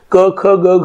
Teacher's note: जिभेचा मागचा भाग वरच्या दिशेने मृदू टाळूच्या दिशेने उचलून काही स्वनांची निर्मिती होते. उदाहरणार्थ क ख ग घ ची जेव्हा निर्मिती होते तेव्हा या ठिकाणी त्याचं उच्चार स्थान जे असतं ते मृदू तालव्य मानले जातात.